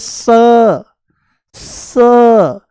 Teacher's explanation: उसके बाद बोलेंगे स स, ये दंत्य सकार है, दांतों से बोला जाता है